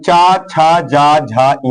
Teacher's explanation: तो पहला क, ख, ग, घङ का उच्चारण स्थान कंठ है और च, छ, ज, झ, ञ का उच्चारण स्थान तालु है